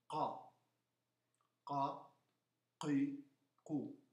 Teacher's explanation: La ca, l'aria viene articolata poco prima del centro del palato.